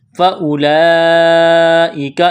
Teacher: فاولئک، اس کو فاولئک نہیں پڑھیں گے، یہاں اس واو کو نہیں پڑھیں گے، یہ لمبی مد ہے، 4 الف کے برابر اس کو کھینچنا ہے